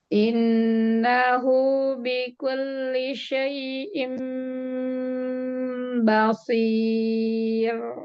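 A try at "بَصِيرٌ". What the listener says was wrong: Nah, ro-nya ditipisin. Basir. Itu ketebelan, jangan. Basir. Iya, tipis aja ro-nya.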